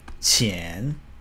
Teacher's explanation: Chen is the second tone which is an ascending tone so kind of like goes up · 钱, which is the second tone, means money.